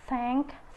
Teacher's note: This sound is voiceless dental fricative, and there are only two positions, which is initial.